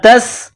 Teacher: سین میں سیٹی کی آواز پیدا کرنی ہے، سین کو باریک کرنا ہے